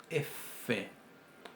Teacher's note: la f es el labio dental sorda